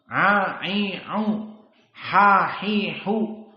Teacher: makhrajnya dari wastul halq